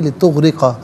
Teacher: را کے نیچے زیر را کو باریک کر کے پڑھا جائے گا